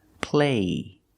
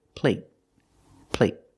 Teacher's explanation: The stop T makes the vowel shorter.